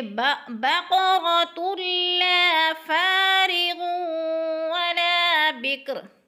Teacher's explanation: دو پیش تنوین کے بعد لام مشدد ہے تو لام کو ذرا سختی سے پڑھیں گے، ادغام کریں گے